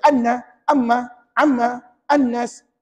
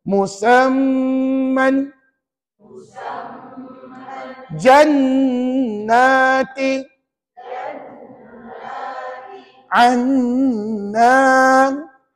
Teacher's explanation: maknanya kita kena bunyi sengau bunyi sengau dengan dua kiraan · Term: wajib dengung dua harakat